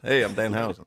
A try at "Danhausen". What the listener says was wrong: By the way, you put the emphasis on the wrong part. You put emphasis on the Hausen. It's just Danhausen. go Danhausen. Danhausen. Danhausen.